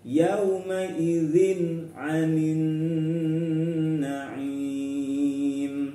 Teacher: Kemudian yauma idzin, yauma, di sini ada fathah diikuti waw sukun ya, lin, contoh dari lin, yauma idzin. Kemudian ada tanwin bertemu ain, ini namanya izhar halqi ya, harus terang bacanya.